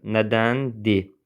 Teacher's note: Səs və hərf tərkibi fərqlənən söz, nədəndir, məsələn, nədəndi kimi tələffüz olunur. R düşür tələffüzdə.